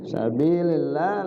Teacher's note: sabilillah lafzul Allah dibaca tarqiq, dibaca tipis, ya. Karena bertemu dengan huruf yang berbaris kasrah.